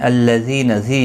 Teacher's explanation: یا مدہ ہے ایک الف کی مقدار کے برابر کھینچ کر پڑھیں گے